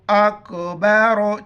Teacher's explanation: چھوٹی کاف ہے باریک پڑھیں گے